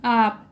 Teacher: हमारा नाक का कोई भी जरूरत नहीं पड़ता है, हवा केवल मुंह से ही निकल रही है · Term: निर्नुनासिक